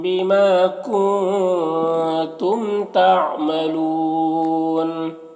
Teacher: اگر یہاں پر وقف کریں گے تو نون کا زبر سکون سے بدل جائے گا تو پھر مد عارض وقفی ہوگا۔ اس میں طول توسط قصر تینوں جائز ہوتا ہے، طول اولا ہوتا ہے، پھر توسط، پھر قصر کا مرتبہ ہوتا ہے۔